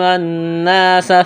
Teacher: نون مشدد پر غنہ کریں گے، آواز ناک میں چھپائیں گے · سین میں سیٹی کی آواز پیدا کریں گے ، سین کو باریک